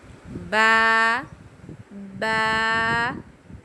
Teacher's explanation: बा बंद होठों के गीले हिस्से से यानी कि तर हिस्से से। जब हमारे होठ दोनों बंद होते हैं तो हम फिर ब को अदा करते हैं। अंदरूनी जो होता है ना तरी वाला हिस्सा वह जब आपस में मिलता है तो हमारा बा अदा होता है।